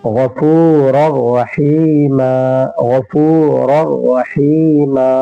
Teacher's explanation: مکمل طور پر یہ مل جاتا ہے نون ساکن را سے، اس لیے غنہ بھی نہیں ہوتا ہے۔ غفور الرحیم، غفور الرحیم، یہاں پر بھی تنوین کو ہم را سے ملا دیے۔ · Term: ادغام را